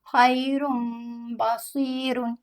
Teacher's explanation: तो हम नून की आवाज़ को मीम में बदलेंगे और बा हर्फ में छिपा कर पढ़ेंगे